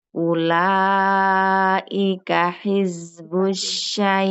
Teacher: Ula panjang ini madm mad yang bertemu dengan huruf hamzah panjangnya kita ambil empat